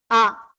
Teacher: মনে করেন আপনারা কি এই যে হামজা, হামজা দেখলেন তাই না, আর আইন, এই জায়গায় যে পার্থক্য রয়েছে, এই যে দেখেন, অনেকে আলিফ আর হামজার ভিতরে মিলিয়ে ফেলে, যদিও আলিফের উপরে নিচে কিছু হলে হামজা হয়ে যায়। এই হামজা উচ্চারণের সময় বাতাস বন্ধ থাকবে, তারপরে কি আওয়াজ শক্ত হবে, বন্ধ এবং শক্ত। আ, আর কোনো আওয়াজ নেই, আ, হামজা জবর আ, এই যে আওয়াজ, ঠিক আছে, এই ছাড়া আর কোনো আওয়াজ নেই, আওয়াজ বন্ধ এবং শক্ত হবে।